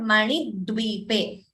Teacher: So the d is doubling. After ni, so second d is heard. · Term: Dvitvam